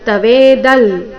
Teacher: ಇಲ್ಲಿ ಅನುಸ್ವಾರದ ಉಚ್ಚಾರಣೆ ನಾಸಿಕ ಲ ಬರಬೇಕು